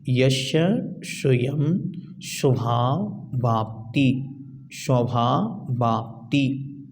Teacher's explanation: आगे स्वभाव और आप्ति दोनों शब्द मिले हुए हैं, स्वभाव वाप्ति एक साथ बोलना